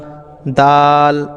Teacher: জেওবার আগা ওপরের দাঁতের গোড়ায় স্পর্শ করুন